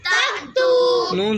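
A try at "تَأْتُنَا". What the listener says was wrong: ज़बर ना ता तू ना तक तू ना बेटे नहीं पढ़ते। ता के साथ जो अलिफ है इससे हमज़ा पढ़ना है, हमज़ा के ऊपर जो जज़म है इसके ऊपर झटका लगेगा। ता हमज़ा ज़बर ता ता वापिश तू ता तू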